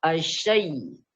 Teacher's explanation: Jadi ketika asyai itu terangkat tengah-tengah lidahnya ke langit-langit.